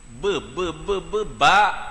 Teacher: ba ni makhraj dia ni kena berlaga bibir ni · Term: huruf ba